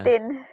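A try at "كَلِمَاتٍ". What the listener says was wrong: Kamatin. Lamnya nggak dibaca. Itu ada lamnya. Kali. Kalimat. Kalimatin.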